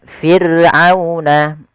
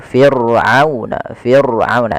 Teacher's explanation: ro sukun didahului dengan huruf kasrah maka dia dibaca dengan ro tarqi ro yang tipis tidak boleh ditebalkan